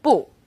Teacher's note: boo when used on its own boo is fourth tone